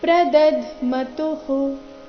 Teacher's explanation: ತುಂತ ನಂತರ ವಿಸರ್ಗ ಬಂದಿದೆ ಅದರ ಉಚ್ಚಾರಣೆ ರಸ್ವ ಹೂ ಬರಬೇಕು